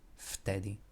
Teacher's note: V and t are two consonants next to each other, differing voice. The second one is unvoiced, so it will change the pronunciation of the first to be unvoiced as well.